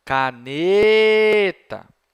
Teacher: reparou que ne é a sílaba tônica Pois é sílaba tônica portanto é aquela sílaba que você demora